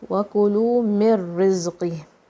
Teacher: Don't say the noon. Okay, noon is going to be deleted. It's not going to be pronounced. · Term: idgham